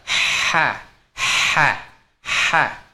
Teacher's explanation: Makhraj ha kecil dia di tengah tenggorokan. Dia karakternya seperti suara ular.